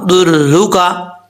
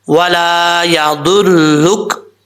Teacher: یہاں سے ولا یا درلوکا، را کے اوپر پیش ہے، ضاد را پیش، در را پیش رو، درلو کاف زبر کا، درلوکا، ولا یا درلوکا، وقف کریں گے تو کاف ساکن ہو جائے گا، ولا یا درلک۔